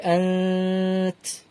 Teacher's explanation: নুন সাকিনের পরে তা একটা ইখফা অক্ষর, তাই জন্য এখানে নুন ইখফা হবে · তা একটা হামস অক্ষর, তাই হামস করতে হয়